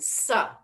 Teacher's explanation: And then sa, that's at the teeth.